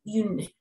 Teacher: Esa U suena como una I, como si fuéramos a dar un beso. Une. Y esta sí es nasal.